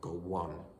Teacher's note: the intrusive W sound in the middle